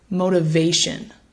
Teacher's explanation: stress so the word is motivation one more time motivation so we place the stress on that third syllable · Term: primary stress